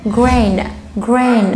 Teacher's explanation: وانا بنطق letter n بحط لساني في الالفيولار ريج